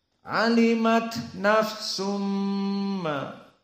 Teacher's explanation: Maka di sini idgham nafsum ma. Maka karena idgham bigunnah berarti nafsum harus dari hidung dan dua harokat.